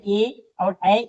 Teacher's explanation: तो देखिए यह हमारा जो है ए और ऐ यह हमारे कंठ तालव वर्ण कहलाते हैं क्योंकि ये दोनों कंठ और तालव दोनों से बोले जाते हैं इसलिए इन्हें कंठ तालव वर्ण कहते हैं